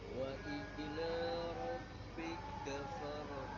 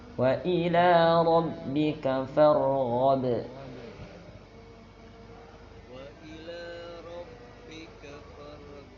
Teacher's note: Yang pertama ghain dialirkan, bukan go. Yang kedua qalqalahnya dipantulkan.